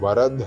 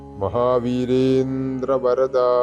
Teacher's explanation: വരദ എന്നുള്ള ദായും രണ്ടും തൊണ്ട ചേർക്കാതെ ഉച്ചരിക്കേണ്ടതായാണ്